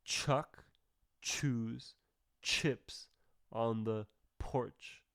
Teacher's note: We need to see air when we produce the ch sound in English, in American English. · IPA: /tʃ/